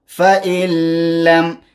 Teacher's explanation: نون ساکنه شاته لام حرف ادغام دی، دلته ادغام راځي، نشه دې خوړلی دی او لام بغیر غنه دی ځکه لام کې غنه.